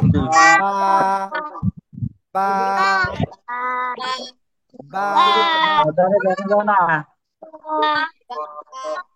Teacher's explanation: দুই ঠোঁটের ভিজা অংশ থেকে বা, এক আলিফটা নিয়ে উচ্চারণ করতে হয়